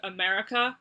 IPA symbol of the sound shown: ə